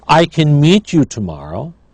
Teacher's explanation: Can is unstressed, so the vowel is reduced. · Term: reduced form